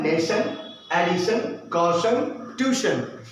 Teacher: Next TION, अगर अंग्रेजी के ऐसे शब्द जिसके अंत में TION आए उसका उच्चारण क्या होगा, शन होगा, तालव्य शन।